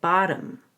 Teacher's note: D in place of the T because it's between vowels and the second o is actually a schwa don't be confused by the spelling